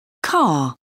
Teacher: some varieties of English don't pronounce the r making the last sound a vowel